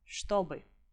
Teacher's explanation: when ch and t sounds are together, they are merged, and you pronounce them as sh, t